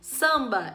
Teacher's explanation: quando você tem o m ou n seguindo vogal na mesma sílaba você junta com a vogal e os dois juntos vão fazer um som só